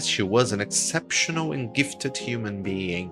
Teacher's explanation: ela alonga as vogais e que ela dá ênfase maior nesses alongamentos de vogais em exceptional e gifted